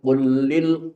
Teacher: qul lam mati ketemu lam yang hidup. Ini hukumnya idgham mutamasilin